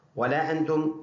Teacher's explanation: تو لا کے اوپر چھوٹا مد ہے، 2 سے 3 الف کی مقدار لمبا کر کے پڑھنا ہے، اور انتم یہ اس نون میں آواز ناک میں جائے گی، اس کو اخفا کہتے ہیں